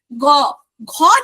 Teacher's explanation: কন্ঠস্বর কিন্তু ঠিক আছে নরমাল খ উচ্চারণ করছি একটু চেঞ্জ হচ্ছে গ যখন উচ্চারণ করছি তখন কিন্তু আমাদের কন্ঠস্বরের ঘর্ষণ আসছে একটা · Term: ঘোষ